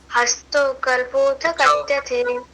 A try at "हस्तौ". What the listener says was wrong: हस्तो नहीं है, हस्तौ है, स्पष्ट बोलो, हस्तौ।